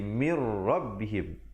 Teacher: maka bacalah dengan Idgham bilagunnah yaitu masuk tanpa dengung